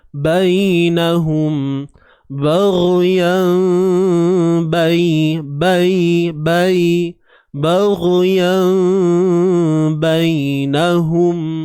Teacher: huruf ya yang bertanda sukun sebelumnya baris atas. Adanya unsur lunak di sini, unsur lembut. Syarat dia bila kita tengok adanya ya ataupun waw yang mati sebelumnya baris atas. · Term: bacaan lunak